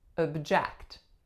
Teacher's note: So in this case, our first syllable becomes schwa, and then our second syllable remains eh.